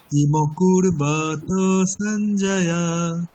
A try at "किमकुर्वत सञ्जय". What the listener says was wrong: আচ্ছা, কিমা কুরুবতা ওটা আমি দীর্ঘ উচ্চারণ করে দিচ্ছি, ওটা দীর্ঘ উচ্চারণ হবে না। কিমা কুরুবতা সঞ্জয়া।